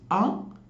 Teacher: the central vowel which is a is unrounded